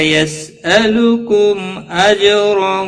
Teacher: میم ساکن کے بعد حمزہ آیا ہے اس لیے اظہار شفوی ہوگا